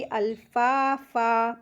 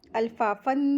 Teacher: अल्फाफा, फ़ा के साथ अलिफ मद्दा आइए, दो हरकत खींचेंगे और यहाँ पे सुकून होने की वजह से मद्दे आरिज़ वक्फ़ी होगा, तो फ़न की जगह फ़ा पढ़ेंगे